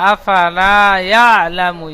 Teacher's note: আফা বলে টান দিচ্ছেন, ফা টান হবে না।